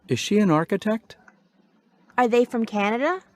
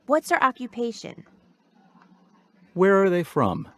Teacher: use Rising intonation in yes no question